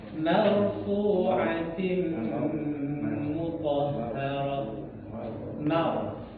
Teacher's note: Huruf ra ketika didahului fathah dia tebal.